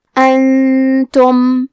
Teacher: کلمت انتم میں نون ساکن ہے، پھر حرف تا ہے، تا حروف الاخفاء میں سے ہے، تو ہم یہ حکم کو غنہ کے ساتھ ادا کریں گے